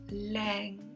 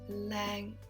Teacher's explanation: Lang in a midtone Lang it sounds like it's hanging in the air it's that kind of a midtone Lang Lang you can point